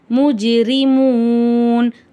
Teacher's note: வருது ஜீம் வந்து கல்கலா உடைய எழுத்து அதனால அசைச்சு ஓதணும் முஜிரிமூன் முஜிரி ராக்கு கீழ ஜேர் இருக்கு ராவ லைட்டா ஓதணும்